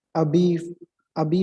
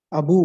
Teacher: Front versus back, E and U, Abi for grandmother and Abu for brother.